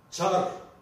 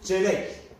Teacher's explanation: Vurgulu dediğimiz Ç harfi ağzımızdan çıktığında onunla birlikte bir tane daha H harfi çıkar. Yani H harfiyle beraber telaffuz edilir.